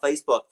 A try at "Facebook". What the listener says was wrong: Sound like you said Facebook with an Australian accent.